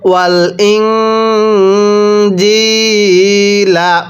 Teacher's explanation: নুন সাকিনের পরে জিম ইকফার হরফ থাকলে নুন সাকিনগুলো গুন্নাহ করে পড়তে হয়। ওয়াত তাওরাতা ওয়াল ইং, জিমিয়াজের জি, লাম জবর লা, ওয়াল ইং জিলা, ওয়াকফ করলে ওয়াল ইং জিল।